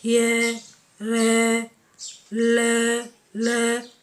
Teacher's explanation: ल में भी जो जीभ है वो ऊपर के तालु के टच होती है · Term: अंतस्थ